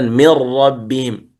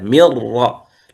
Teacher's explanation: أنا أنطق راء مشددة مر، لا أقول من راء، لا غنة ولا نون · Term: الإدغام الكامل